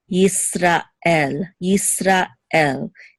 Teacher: it's almost as if it's two separate words even though in English we kind of slurred together we say Israel right but in Hebrew it's Israel now we'll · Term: separation